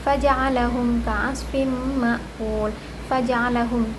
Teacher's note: Terdapat hukum izhar syafawi karena hukum mim mati bertemu dengan huruf ain. Cara membacanya jelas, tidak berdengung.